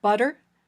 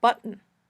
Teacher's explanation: 2 extra ways of pronouncing t, the flap sound in words like butter, and the glottal stop in words like button